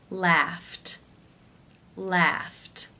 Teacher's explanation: the final sound of the infinitive is the unvoiced F sound · The final sound in the infinitive is F, the unvoiced F sound. Since it's unvoiced, it is case 1, where the ED is pronounced as the T sound.